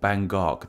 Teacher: the G sound actually goes to the start of the second syllable